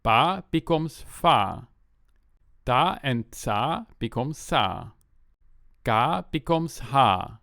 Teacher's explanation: The stops and affricates become fricatives.